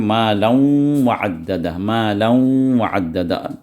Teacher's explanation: اب مالا وعددہ نہیں پڑھیں گے، یا مالا وعددہ ایسے بھی نہیں پڑھیں گے۔ تو یہاں پر جو ہے نون کا ساؤنڈ ظاہر ہوگا، لیکن آدھا ظاہر ہوگا، صرف غنہ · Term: ادغام بغنہ ناقصہ